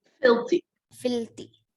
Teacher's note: where the stress is given on the first syllable